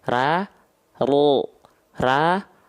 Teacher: angkat pangkal lidah bunyi vokalnya O. Perhatikan bibirnya nggak monyong ya. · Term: isti'la